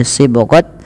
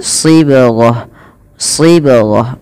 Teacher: bila kita wakaf huruf ta dimatikan dengan bunyi bacaan huruf ha